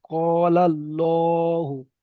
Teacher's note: আল্লাহর লামকে পুর করে পড়তে হয়